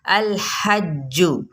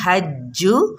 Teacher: الحج، لام کو ہم نے ہلانا نہیں، حج، ٹھیک ہے، تشدید ہے تو اس لیے ذرا تھوڑا سا دبا کے پڑھنا اور پیش کو لمبا نہیں کرنا